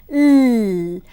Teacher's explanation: L is described as an alveolar sound, lateral sound because the tip of the tongue touches the alveolar ridge, l, and the lung air escapes through the mouth laterally